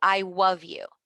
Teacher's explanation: instead of the L sound, children might replace it with a W sound. So instead of I love you, I love you.